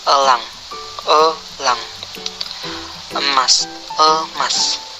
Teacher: Vokal tengah, sedang, tak bundar, semi tertutup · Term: Vokal E